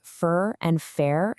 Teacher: The Scouse accent there has this really unique quality where certain vowels just blend together. For a Scouse speaker, the words fur and fair can end up sounding exactly the same